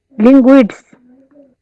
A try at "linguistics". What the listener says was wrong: হলো না, না, এই এসটা আসতেছে না, এই এসটা কিন্তু আসতেছে না, হ্যাঁ এই এসটা কিন্তু আসতেছে না, মানে প্রথম এসটা টি এর আগের এসটা আসতেছে না।